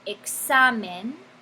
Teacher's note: Y tiene el énfasis sobre la penúltima sílaba, examen. Entonces está bien, tal y como está escrito, sin una tilde.